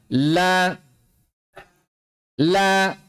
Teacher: Huruf lam itu makhrajnya ujung dua tepi lidah. Ujung dua tepi lidah sampai pada akhir ujung lidah menempel pada gusi dari gigi-gigi bagian atas. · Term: makhraj huruf lam